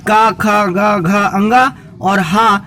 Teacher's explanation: का, खा, गा, घा, अंगा और हा और विसर्ग, इन सब का उच्चारण स्थान कंठ है। मतलब बच्चों यह जो वर्ण आप देख रहे हैं अकुहा विसर्जनीनाम कंठा लिखा हुआ है, इसका मतलब है कि आ का और पूरे का वर्ग का और हा हवाई जहाज वाला और विसर्गों का उच्चारण स्थान बच्चों कंठ है।